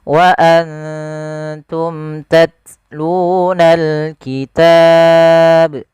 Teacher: mim mati bertemu dengan huruf ta, ini ada bacaan izhar syafawi juga sebenarnya. Sebagaimana tadi anfusakum. Suara mimnya harus kita jelaskan.